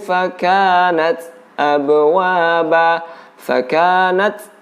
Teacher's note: ada angin yang keluar atau udara yang keluar bersamaan dengan disukunkannya huruf ta. Dan tempat untuk mengeluarkan angin ini huruf ta. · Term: huruf ta yang bersukun